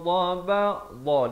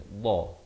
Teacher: di tepi lidah kita ni, dha, kanan ataupun kiri mengikut keselesaan